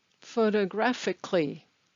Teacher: Notice that the stress is on gra and that the A in kali is not pronounced, so it's kli, photographically.